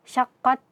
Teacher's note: Nah, dengan menempelkan ujung lidah kita kepada pangkal gigi seri atas, syaqqat. Kemudian baru setelah itu kita berikan sifat hamas, mengalirnya nafas, syaqqat. Nah, yang sering terjadi lagi adalah kita mengalirkan suara di ta sukunnya sehingga nantinya terdengar desisan dari huruf ta ini, syaqqat.